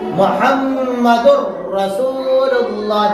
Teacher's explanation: गुन्ना बिल्कुल महसूस नहीं होता, बल्कि ये वाला हर्फ जो है इस हर्फ से बिल्कुल बदल जाता है। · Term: बिला गुन्ना